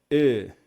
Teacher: o Hatef Segol você vai pronunciar muito parecido como se fosse o Shivá, porque ele tem esse som de E reduzido. Então é E.